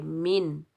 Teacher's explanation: नून को जाहिर करके पढ़ेंगे, ना इख्फा करेंगे ना गुन्ना करेंगे और ना ही खींच कर अदा करेंगे, मिन करेंगे, मिन। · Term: इजहार